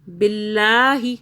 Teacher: اب یہ دیکھیں اللہ کو ہم باریک پڑھ رہے ہیں کیونکہ اللہ سے پہلے زیر آ رہا ہے. باللہ، ہی کو زیادہ نہیں کھینچنا کیونکہ اس کے آگے کچھ بھی نہیں ہے کھینچنے کے لیے. · ہی کو زیادہ نہیں کھینچنا کیونکہ اس کے آگے کچھ بھی نہیں ہے کھینچنے کے لیے. ہا یا زیر ہی ہوتا ہے لیکن آگے کچھ نہیں ہے.